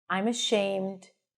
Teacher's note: you hear that pitch staying up. It means that something else is coming up. That's the indication that there is a comma here, right?